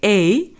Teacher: the tongue moves from the position of A to the position of E. A is the first element and E is the second element.